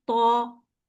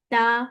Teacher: मोटे हर्फ में हमारी आवाज जुबान उठाने से भारी हो गई। भरी हुई आवाज निकली। और जुबान को नीचे रखने से हमारी आवाज बारीक निकली और हमारा वर्ड वहां पर निकला ता।